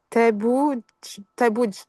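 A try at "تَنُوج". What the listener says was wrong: Ouais, juste la deuxième lettre, c'est pas bout.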